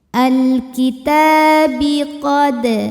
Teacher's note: Ta disebut dengan mad tabi'i muqaddar. Sebab huruf ta berbaris fathah panjang, maka huruf ta ini dipanjangkan 2 harokat saja.